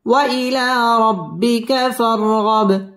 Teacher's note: বা কলকলার হরফ ধাক্কা দিয়ে পড়তে হবে